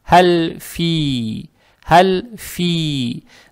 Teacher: Далее стоит буква «Фа» с касрой, и эту касру мы должны тянуть за счет буквы вот «Я», это буква «Я», по идее, здесь две точки должны быть, «Фи», «Фи». Эту касру за счет буквы «я» должны тянуть два раза. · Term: маттоби'и